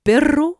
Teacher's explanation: la pointe de la langue qui vibre contre les alvéoles produisant le r italien bien connu des chanteurs qu'il utilise même en français où il e pas je vous